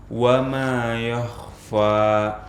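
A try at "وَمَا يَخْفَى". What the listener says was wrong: Tipiskan fa-nya, jangan fo.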